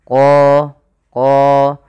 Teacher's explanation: huruf qo ini harus kita tebalkan qo qo karena dia punya sifat huruf isti'la.